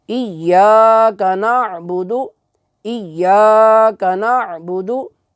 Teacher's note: دال جو ہے اسے ہم لمبا کر کے نہیں پڑھیں گے بلکہ اسے ہم مختصر اور بالکل لمبا کیے بغیر پڑھیں گے۔